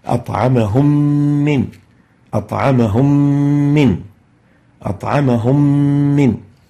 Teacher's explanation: merging the still meme, the first meme sakina, into the second meme, producing a shadda and ghunnah reflected by the color green. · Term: idgham with ghunnah